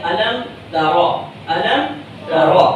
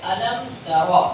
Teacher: میم کے مخرج کو ظاہر کرتے ہوئے آگے بڑھ جانا ہے. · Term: اظہار